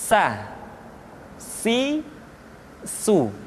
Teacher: ujung lidah di antara dua gigi seri kita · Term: huruf sa